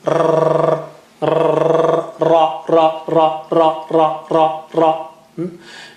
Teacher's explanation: You have to have that vibration in the tongue. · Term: Arabic ra